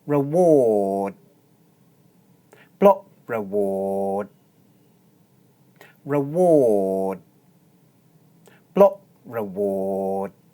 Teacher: I'm not really making a d sound. Instead, I put my tongue into the d position and then hold.